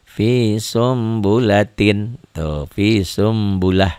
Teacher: jadi bunyi Nun matinya berubah menjadi mim mati